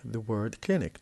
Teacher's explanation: The word clinic, 2 syllables, and the stress is on the first.